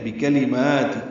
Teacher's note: کاف لام جلدی ادا کریں گے، میم کو 2 حرکات لمبا کریں گے